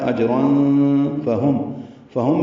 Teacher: اجرن میں جیم ساکن پہ قلقلہ ہے